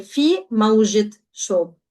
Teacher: So mawji ends with the round ta, mawji, which is the soft eh sound in Lebanese. When we're annexing to another noun, which is shob over here, the sound is going to change to it. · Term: vocalize the ta